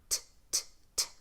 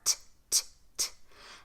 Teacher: So when T is at the beginning of a word, the letter T comes at the beginning of a word, it's pronounced t, t, t. The tip of your tongue touches right above where your top teeth and gums meet. So not on the teeth, right above where the teeth and gums meet. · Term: true T